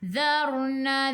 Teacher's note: Zarna, dzadi tu hujung lidah keluar pada gigi depan, sebelum ra ada baris atas, ra kena baca dengan tebal lidah naik ke atas